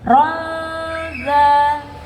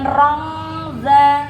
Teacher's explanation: Itu ikhfa yang artinya disamarkan. Cara bacanya ronza, bukan rongza ya.